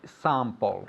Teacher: It's more nasal, this A